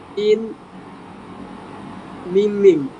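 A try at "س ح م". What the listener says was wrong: না, এটা হা, সিন হা মিম।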